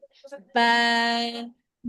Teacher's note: দুই ঠোঁট বা একসাথে করব, একসাথে করে তারপর উচ্চারণ দিব